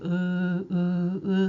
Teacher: 발음할 때 혀의 최고점이 저 목구멍 뒤쪽으로 넘어가죠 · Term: 후설 모음